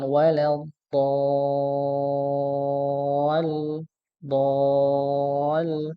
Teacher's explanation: ketika baca huruf dha maka dipanjangkan walal dol dol begitu nggih dipanjangkan ya panjang 6 harakat